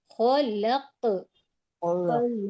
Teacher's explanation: قاف کی دوہری آواز آنا چاہیے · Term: قلقلہ